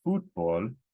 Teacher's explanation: stress it according to the rule this word is an exception stress it on the second last not the last